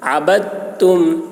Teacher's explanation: عبدتم یہاں پر دال نہیں پڑھا جائے گا، با کو تا سے ملا کر پڑھیں گے